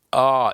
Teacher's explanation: ಎರಡು ಮಾತ್ರೆ ಕಾಲದಲ್ಲಿ ಎಳಿತಿದ್ದೇವೆ ಹಂಗಾಗಿ ಅಂದ್ರೆ ಜಾಸ್ತಿ ಸಮಯ ತಗೊಂತಾ ಇದೆ ಅ ಈ ಊ ಎ ಐ ಓ ಔ ನೋಡಿ ಇವು ಏಳು ಅಕ್ಷರಗಳನ್ನ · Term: ದೀರ್ಘ ಸ್ವರಗಳು